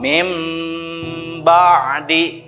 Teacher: Kalau iklab ini adalah menukarkan, ya artinya menukarkan. Jadi ketika nun sukun dan tanwin bertemu dengan ba, maka nunnya ditukarkan dengan suara mim.